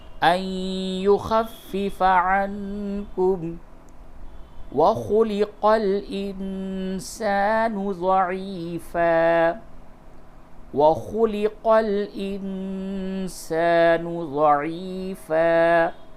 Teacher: نون ساکن کے بعد سین ہے، اس جگہ پہ بھی اخفا ہوگا